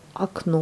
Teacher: on a un O devant, et on le lit comme un A. Et à la fin, on lit bien le O puisqu'il est accentué.